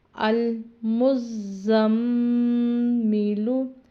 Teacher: جب نون اور میم کے اوپر شد ہوتی ہے تو اس پر غنہ لازماً کیا جاتا ہے، یعنی ناک میں آواز چھپائی جاتی ہے